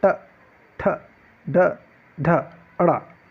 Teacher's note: अगर से हम बात करते हैं ट वर्ग की, तो ट वर्ग को मूर्धा व्यंजन या मूर्धन्य व्यंजन कहा जाता है, क्योंकि जो हमारी जो जीवा होती, जीवा का जो सामने का जो भाग होता है वह ऊपर तालु में जाके टकरा के वापस आता है। ट, ठ, ड, ढ, अड़ा, छोटा सा भाग, छोटा सा हिस्सा सामने का वह लगता है, इसलिए इसे मूर्धा व्यंजन कहा जाता है, मूर्धन्य कहा जाता है।